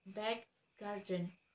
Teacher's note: this k is sometimes replaced by a glottal stop, as in word back garden, where you may perceive the allophone k is almost a pause before the k.